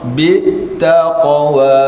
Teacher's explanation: Qaf ni ataupun huruf qalqalah, sukunnya sukun mengalir. Dia tidak ada stop.